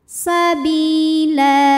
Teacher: Sebab ada baris tanwin fathah yang kita berhentikan atau kita wakafkan. Cara bacanya panjang lamnya 2 harokat saja. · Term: mad iwad